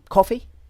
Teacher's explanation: I'm just saying the word coffee, but I'm going up to indicate that it's a question.